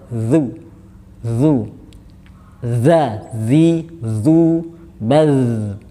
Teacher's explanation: A'udzu, zal. Jadi ini menyentuhnya lidah, ujung lidah dengan ujung gigi seri bagian atas. Jadi lidahnya sedikit keluar.